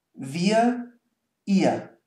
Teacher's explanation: So there's no R whatsoever.